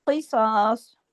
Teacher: काफ भी मोटा, स्वाद भी मोटा, जिस काफ पे रुकेंगे वो भी मोटा, किसास, दो पेश की तनवीन को रोक देंगे, ये आर्जी, ये जो आर्जी सुकून है उसका तरीका है।